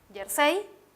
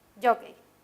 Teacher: el acento se ubica en la última sílaba, jersey. En la palabra jockey, el acento se ubica en la penúltima sílaba